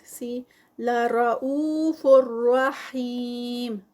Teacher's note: فا پر تنوین ہے، آگے را ہے تو ادغام ہے، لیکن یہ ادغام جو ہے یہ وداؤٹ غنہ ہے. را اور لام جو یرملون کے لیٹرز ہیں ان پر جو ادغام ہوتا ہے وہ وداؤٹ غنہ.